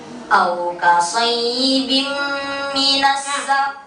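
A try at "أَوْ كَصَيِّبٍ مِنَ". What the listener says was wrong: Soibim. Coba jangan ke khaysyu. Jangan ke khaysyu. Memang ada makhraj khaysyu. Ada tempat keluarnya khaysyu. Kalau khaysyu itu rongga hidung. Keluar hurufnya hanya huruf-huruf yang gunnah. Misalnya wa man yarghabu, bukan au kausai, jangan masuk ke rongga hidung. Au kasaybin minas samaa.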